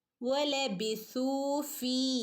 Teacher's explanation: ഫഇൻ്റെ കൂടെ യാ മദ് വന്നിട്ടുണ്ട്. ഫീ രണ്ടനക്കം നീട്ടി കൊടുക്കണം.